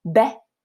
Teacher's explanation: Listen to the difference between the length of the fatha versus the length of the alif, right? Betat.